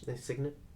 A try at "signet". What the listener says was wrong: I don't think you pronounced the G. Signet signet.